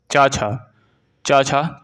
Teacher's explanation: छ ध्वनि का उच्चारण स्थान कौन सा होगा चा छ च छ तालव्य होगा